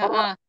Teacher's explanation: Oh, ujung lidah dan sedikit punggung lidah. Ujung lidah sedikit punggung dan lidah menyentuh gusi atas. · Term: huruf ro